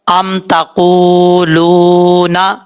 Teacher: یہاں پر قاف جو ہے حروف مستعلیہ میں سے ہے، دو نقطوں والا قاف پر پڑھا جائے گا، واو مدہ ہے، ایک الف کی مقدار لمبا کر کے پڑھیں گے، نون کے اوپر شد غنہ کریں گے۔